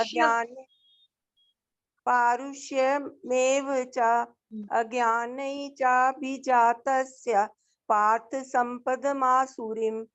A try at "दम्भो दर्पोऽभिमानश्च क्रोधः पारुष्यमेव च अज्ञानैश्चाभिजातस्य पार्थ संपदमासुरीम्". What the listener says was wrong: हाँ माता जी ठीक है, बहुत अच्छा।